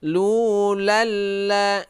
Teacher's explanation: Nah, ini idgham bila gunnah. Jadi tidak berdengung. Lu lal la. Dia itu seperti bertasydid, ya.